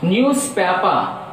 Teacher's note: so there are 3 syllables, so that stress is on first syllable